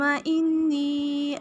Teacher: انی نون مشدد غنہ، یا سکین سے پہلے زیر ہے، یا مدہ ایک الف کے برابر لمبا کریں گے